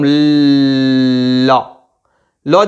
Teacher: যতক্ষণ ল সাউন্ড হচ্ছে, ল ফোনটা যতক্ষণ হচ্ছে ততক্ষণ জিভটা এরকম ল যেই শেষ হয়ে যাচ্ছে সাউন্ডটা তখনই জিভটা ছেড়ে দিচ্ছে, অর্থাৎ জিভের দুপাশ দিয়ে হাওয়া বেরিয়ে আসছে